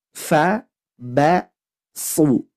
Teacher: tidak boleh huruf ba-nya ikut tebal karena di depannya ada huruf tebal